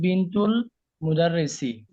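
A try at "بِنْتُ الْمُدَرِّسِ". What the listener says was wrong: এক পিস বললেন কেন যেন ঠিক আছে আপনি পড়া ঠিক আছে শুধু কেন এক পেশ করছেন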